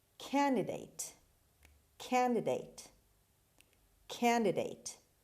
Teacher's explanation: the stress is at the beginning on the first syllable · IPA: /ˈkændədeɪt/